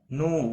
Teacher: واو مدہ ہے، ایک الف کے برابر کھینچ کر پڑھیں گے